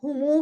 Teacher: मीम को पेश देकर वाव मद्दा के बराबर उसको लंबा करके पढ़ते हैं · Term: सिला